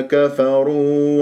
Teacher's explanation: الراء مفخمه لانها مضمومه